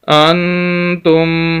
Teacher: حمزہ کو نون کے ساتھ ملائیں گے کیونکہ نون ساکن ہے، یہ ساکن کی علامت ہے۔